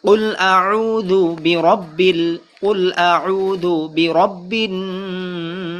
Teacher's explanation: قل أعوذ برب الناس, এখানে মধ্যে নাস মাদের হরফের পরের হরফে অক্ফ হওয়ার কারণে 3 আলিফ টান হবে, মাদ্দা আরজি।